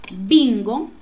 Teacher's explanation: hacemos el acento en bin aún cuando no tiene tilde